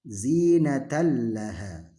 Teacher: Tanwin bertemu lam, maka dia tidak boleh didengungkan dan menghilangkan tanwinnya. Tanwinnya kita hilangkan, langsung masuk ke lamnya.